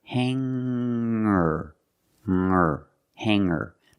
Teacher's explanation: i don't pronounce the G sound it's just the nasal M linked together with the r together